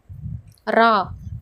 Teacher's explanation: நாவின் நுனி மேல் அன்னத்தில் மேல் பகுதியை தொட்டு வருவதால் ரகரம் தோன்றுகிறது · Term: இடையென ரகரம்